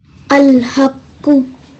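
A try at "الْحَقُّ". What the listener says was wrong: You hardened that really well and you made a thick sound as well.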